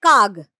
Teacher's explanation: অঘোষ ধ্বনি, অর্থাৎ বর্গের প্রথম দ্বিতীয় ধ্বনি উচ্চারণে ঘোষ ধ্বনিতে পরিণত হবে। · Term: ঘোষী ভবন